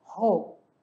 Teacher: Lembrando que o R sempre vai vibrar e o J tem o som do Rzinho lá no fundinho da garganta